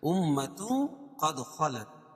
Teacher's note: اخفاء حقیقی، کیونکہ تنوین کے بعد حروف اخفاء کے 15 حرفوں میں سے قاف ہے، تو یہ ناک میں آواز کو چھپا کر پڑھیں گے